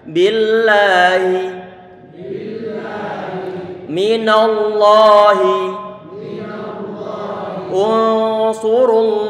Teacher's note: Walaupun toh tulisannya tidak begini, maka nanti perlu dipastikan bahwa lafzul jalalah perlu diberikan mat. Perlu diberikan mat, sehingga perlu untuk dipanjangkan.